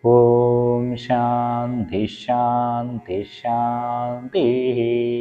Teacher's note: രണ്ടാമത്തെ ശ വരുമ്പോൾ അവിടെ ശകാരത്തിന് ഇരട്ടിപ്പാണ് വിസർഗ്ഗത്തിന്റെ സ്ഥാനത്ത് ശകാരം വരും · വിസർഗത്തിൻ്റെ സ്ഥാനത്ത് ശകാരം വരും, ആദ്യത്തെയും രണ്ടാമത്തെയും. അവസാനത്തെ ശാന്തിക്ക് മാത്രമായിരിക്കും വിസർഗത്തിൻ്റെ ഉച്ചാരണം വരിക.